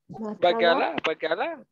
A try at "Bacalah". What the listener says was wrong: No, not bacalah. Bacalah. Not bakalah, but bacalah. Yeah, yes, that's right.